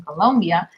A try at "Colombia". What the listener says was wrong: What's with the U? It's Colombia.